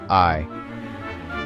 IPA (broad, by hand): iː